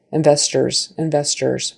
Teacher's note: And that ORS, a lot of times in English, that final syllable, if it's unstressed, and it is because we're putting our stress on the second syllable, investors, investors, that final vowel kind of gets thrown away and it's lazy, right? So it's investors instead of investors.